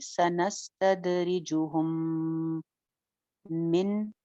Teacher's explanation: मीम के बाद मीम आ जाए तो वहां पे गुन्ना हो जाता है, इदगाम भी होता है, तो यहाँ पे हम गुन्ना करेंगे।